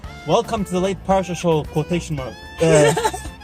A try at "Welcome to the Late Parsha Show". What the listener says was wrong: Just because your line has an exclamation mark doesn't mean you pronounce exclamation mark. Just say, welcome to the Late Parsha Show.